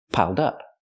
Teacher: Pronounce it like one word, not piled up, but piled up. Connect the d with the next word, dup, piled up. Pronounce it like one word.